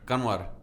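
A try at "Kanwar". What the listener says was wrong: you don't pronounce the N. You don't say the N.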